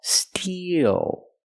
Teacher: the first word is steel we use the long e plus the dark L Steel e like green beans steel then transition